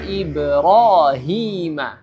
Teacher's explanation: cara membaca mad tabi'i ini tidak boleh lebih dari 2 harakat